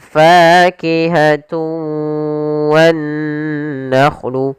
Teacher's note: Ada yang kurang atau masih sedikit menyisakan suara nunnya. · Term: idgham naqis